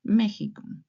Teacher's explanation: that's why Mexico, it's written with X, but it's pronounced like a H in English, more or less.